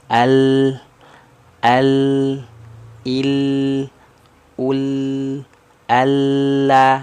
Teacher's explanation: kalau huruf lam ujung lidahnya kan naik makhrajnya ya